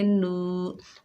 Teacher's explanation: ये वाव मद्दा है, एक अलिफ की मिकदार खींच कर पढ़ेंगे